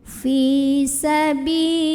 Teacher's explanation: lam jalalah dibunyikan secara tarqiq karena huruf sebelumnya yang lam barisnya kasroh, maka bacanya tipis